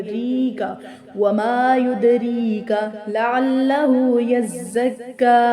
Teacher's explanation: را کو بقدر ایک الف کھینچ کر ادا کریں گے